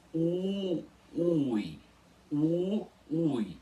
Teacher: é como se fosse um u muito longo no começo da palavra · Então vocês precisam começar aqui pronunciando duas vogais juntas, sem nenhuma delas ser semivogal. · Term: iato, hiato